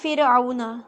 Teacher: جیسے آپ دیکھیں فرعون، جو ورڈ فرعون ہے اس میں جو فرعون کا را ہے وہ ساکن اور اس سے پہلے زیر ہے تو را کو باریک پڑھیں گے